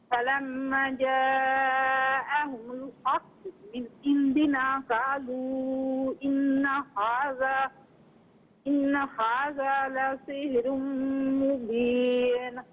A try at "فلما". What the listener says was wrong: باقی آپ نے صحیح پڑھا، فلما میں لما الف مدہ ہے، اس سے ایک الف کی مقدار کھینچ کر پڑھیں۔ بہت بہت شکریہ۔ السلام علیکم۔